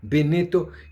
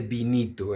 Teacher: la E de Benito la pronuncia como una I y la I como una I. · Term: intermedia